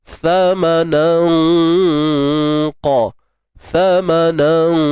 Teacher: Ikhfa hakiki Sa ma nan. Nan tu dah tak jadilah bunyi nan. Kena ikhfa kan, sembunyi. · Sebab huruf qaf tu huruf yang tebal, jadi dengung pun kena ikut sama tebal. Thamanan qalila.